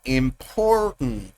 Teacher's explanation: el acento está en tent, en important. Y las otras 2 sílabas pierden sonido. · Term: acentuación